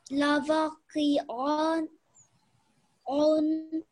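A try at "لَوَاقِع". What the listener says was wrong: We need to make this a little bit longer because this is alif madda here. Lawaqi'un. And if we were doing Waqf, it would be Lawaqi.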